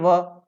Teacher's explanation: व का उच्चारण स्थान दांत और ओष्ठ दोनों की सहायता से होता है, तो इसको दंतोष्ठ कहते हैं।